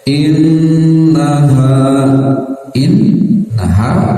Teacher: Nun bertasdid tahan sekitar dua harakat